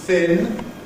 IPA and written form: θɪn (thin)